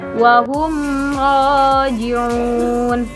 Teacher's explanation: Cara membacanya dengan menyuarakan mim mati dengan jelas di bibir, seperti mulut tertutup. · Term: izhar syafawi